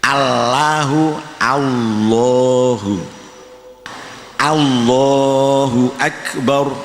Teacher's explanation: lidahnya harus nempel pada gusi, lah suaranya ditebalkan seakan-akan baca wawu tapi lidahnya nempel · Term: tafkhim